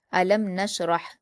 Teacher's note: میم ساکن ہے تو لام کو میم سے ملائیں گے، اور میم ساکن کے بعد نون ہے تو یہاں اظہار شفوی کا قاعدہ ہوگا، تو میم ساکن کی آواز کو بلا غنہ کے جلد پڑھیں گے